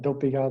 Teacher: In the longer forms, you notice that dopiga, this is high, high, low